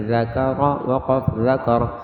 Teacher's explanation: ذال جب پڑھیں گے دانتوں کے درمیان میں زبان کی نوک آئے گی نرمی سے